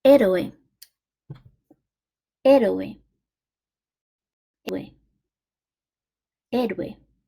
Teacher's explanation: héroe has a clear stress on the first E.